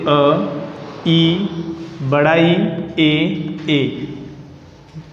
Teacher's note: अग्र स्वर सभी को पता चल रहा है, अग्र यानी आगे, जिह्वा के आगे वाले भाग से उच्चारित होने वाले स्वर